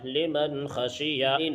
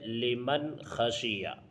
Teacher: نون ساکن کے بعد حروف حلقی میں سے خا آیا ہے، اس لیے یہاں بھی اظہار ہوگا اور اس کو بھی ظاہر کر کے پڑھیں گے۔